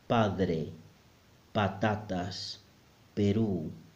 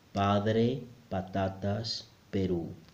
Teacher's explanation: Number 6, the P sound again. Very similar to the English one, but the Spanish one is softer. Somehow there is less air coming out.